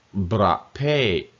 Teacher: Bra, first half of the word is low tone. Pate, falling tone.